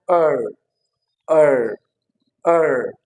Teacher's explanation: it is being produced at the centre of the mouth